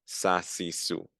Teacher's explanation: the seen, the back of the tongue is not coming up. It's going down.